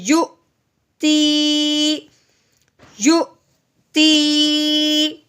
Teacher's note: تو ہم نے کیا کرنا ہے کہ ہم نے یا کو حمزہ کے ساتھ ملانا ہے، واؤ کے ساتھ نہیں ملانا ہے، ٹھیک ہے؟ جب ہم یا کو حمزہ کے ساتھ ملائیں گے تو وہ نرمی والا نہیں ہوگا، نہ ہی کھینچنے والا ہوگا، بلکہ وہ جھٹکا لگانے والا ہوگا۔